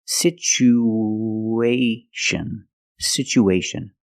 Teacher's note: we have two vowels together the U and the a we need to link these vowels with the sound w w like the W sound w w together situ sitation situation